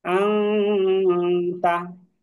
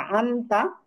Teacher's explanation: যেমন আং, তা, এই যে হামজা নুন জবর আন, তা জবর তা, আন তা, কিন্তু নুন সাকিনের পরে তা আসার কারণে এটা আং তা হয়ে গেল। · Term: ইকফা